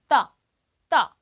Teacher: अपनी जीवा दांत को स्पर्श की, ऊपर वाले दांतों को, ता। इसके बाद क्या क्या कहा था, तो देखो ऊपर वाले दांतों को स्पर्श किया, था।